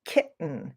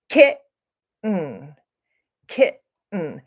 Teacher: It is where when we come to that T, those two T's together, we make a stop kind of in our throat. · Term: glottal stop